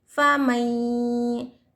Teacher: کیونکہ یہاں پر کیا ہے نون ساکن کے بعد یا ہے، تنوین یا نون ساکن کے بعد حرف یا آیا تو یہاں پر غنہ کیا جائے گا ، ادغام یرملون کا قاعدہ ہو رہا ہے، یہاں پر